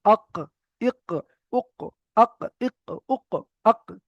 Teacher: এর মাখরাজ হলো জিবের গোড়া এবং তার বারাবার উপরের তালুর সাথে লাগিয়ে উচ্চারিত হয় 2 নুক্তাওয়ালা কফ। অর্থাৎ জিবের গোড়া, আমাদের জিভ রয়েছে, জিবের গোড়া এবং ওই সোজা উপরের তালুর সঙ্গে লাগবে কফ।